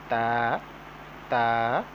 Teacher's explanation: زبان کی نوک جب ثنایا اولیہ کی جڑ سے لگے تو یہ حروف ادا ہوتے ہیں